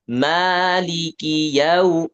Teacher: Jadi jangan ada tekanan intinya. Dari lam ke kaf itu jangan ada tekanan.